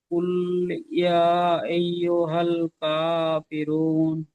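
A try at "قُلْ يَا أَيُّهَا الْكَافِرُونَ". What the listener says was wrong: আপনি কুল বলে টানবেন না, কুল টান হয় না, কুল ইয়া আইয়ুহাল কাফিরুন।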